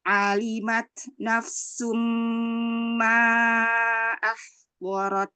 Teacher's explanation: Ain fathah perbaiki. Keluarnya A, jangan terlalu tebal.